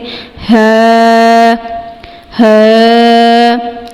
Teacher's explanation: اس کے بعد ہے ہ، اس کی آواز آپ نے تھوڑی سی ہیویئر نکالنی ہے، اور اس کو اقصی الحلق سے ادا کرنا ہے، حلق کے آخری حصے سے